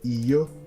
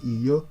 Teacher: To say no, you can say iyo, a low tone and high tone, iyo, low tone, high tone.